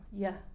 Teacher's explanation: en la actualidad la mayoría pronuncia los dos de la misma manera, que es el fonema palatal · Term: yeísmo